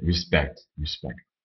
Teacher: la première syllabe c'est un i et la deuxième est accentuée